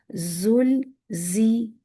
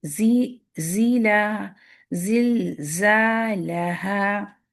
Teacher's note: اس کا مخرج ہے ٹپ آف دا ٹنگ جا کے نیچے والے دانت کے اندر والے حصے کو لگے گی. باریک جو دانتوں کے دندانوں کے بیچ گیپ ہوتا ہے اس سے آواز نکلے گی، یہ آواز والا لیٹر ہے. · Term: بزنگ ساؤنڈ